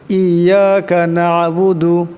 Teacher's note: ইয়াকা না'বুদু, ইয়াকা এখানে ছোটো কাপ, না'বুদু না এখানে আইন সাকিন, আওয়াজটা গলা থেকে চাপ দিয়ে বাইর করতে হবে